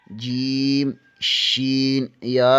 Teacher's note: وسط زبان بالمقابل اوپر کے تالو سے لگے تو جیم، شین، یا ادا ہوتے ہیں